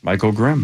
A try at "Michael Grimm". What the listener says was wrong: The way you said that, you should almost pause between it. You almost sounded like Mike's rim.